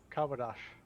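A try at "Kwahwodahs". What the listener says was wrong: you said sh on the end when it would actually be HS, not SH.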